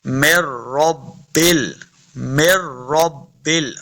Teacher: मीम को रा मुशद्दद के साथ लाना है, बगैर गुना के पढ़ेंगे।